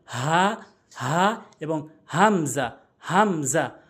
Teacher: হা এবং হামজা হলকের শুরু থেকে উচ্চারণ হয়